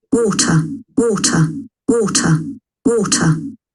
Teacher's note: Letra R não é pronunciada.